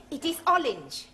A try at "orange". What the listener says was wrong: You really must work at those R sounds. Try saying, round the rugged rock, the ragged rascal ran.